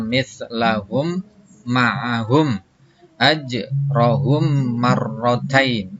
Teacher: Di mana ada mim mati ketemu dengan mim, ya, maka membaca mimnya harus dimasukkan kepada mim yang hidup serta memakai dengung. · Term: idgham mimi